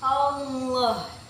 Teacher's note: Hukum tajwidnya yaitu tafhim. Karena lam jalalah yang berharokat fathah, cara membacanya itu ditebalkan seperti ini